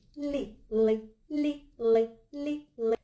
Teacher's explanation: коли ми промовляємо твердий л то ми міняємо тембер голосу голос у нас більш грубіший коли ми промовляємо м'який лі то голос у нас більш тонший